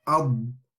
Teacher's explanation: you stay on the sound of the Dad, and it sort of slides up to the gums, ensuring that the al-istitala is being given, the correct due of the Dad is being given.